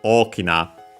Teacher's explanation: The accent moves on the first mora here. So on the first o.